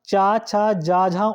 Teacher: तालव्य इसका उच्चारण होता है फ्रेंड्स तालु से।